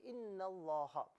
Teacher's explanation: انا کو لفظ اللہ کے ساتھ ملا کر پڑھا جائے گا تو انا میں جو نون ہے، نون کو لام کے ساتھ ملایا جائے گا اور درمیان سے حمزہ کو حذف کر دیا جائے گا، یعنی اسے نہیں پڑھا جائے گا.